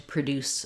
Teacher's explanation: We have the schwa sound, and we have second syllable stress. So in produce, we have the d sound.